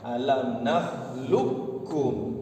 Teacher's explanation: Yang tadinya di sini alam nakhluqakum qalqalah, hilang hukum qalqalahnya, masuk pada kaf langsung. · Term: idgham mutaqaribain